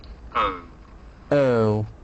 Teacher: This make is like saying the letter O. It begins with ER, shwa, and moves towards the O.